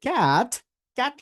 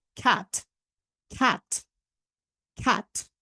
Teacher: And C for, C দিয়ে সাধারণত যেই ওয়ার্ডগুলো আমরা দেখি সবগুলার উচ্চারণটা আমরা ক দিয়ে না করে আমরা একটু খ, খ, এই টাইপের একটা সাউন্ড করার চেষ্টা করবো। লাইক ফর এক্সাম্পল, আপনি যদি বলেন এটাকে ক্যাট, ক্যাট না বললে আমরা এটাকে বলবো খ্যাট, খ্যাট, খ্যাট, রাইট, খ্যাট।